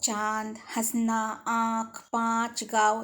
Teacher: अब चलिए, इसे हम जो अगला आया वो अनुनासिक कहलाता है या इसे हम चंद्र बिंदु भी कहते हैं। इसे बोलते हुए नाक और मुंह दोनों से ध्वनि निकलती है। इसका चिन्ह चांद और उसके ऊपर बिंदु बनी होती है।